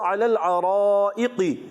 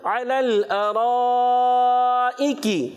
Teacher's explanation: کاف کو باریک رکھنا ہے. یہ کاف جو ہے قاف سے نہیں بدلنا چاہیے.